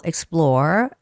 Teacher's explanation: the stress goes on the second syllable, explore on the O, and uncover.